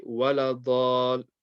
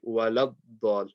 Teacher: You have to join the lam to the dad.